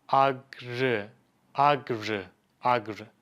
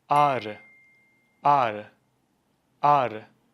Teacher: what soft G does in a word is it lengthens, it stretches the vowel that comes before soft G. For example, in the arı example, it lengthened the a sound.